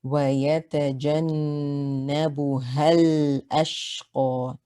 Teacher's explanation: Because this is an alif mud, we drop it. So we go straight from the ha with the fatha to the lam.